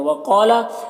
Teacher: وقالا، قاف حروف مستعلیہ میں سے پر پڑھیں گے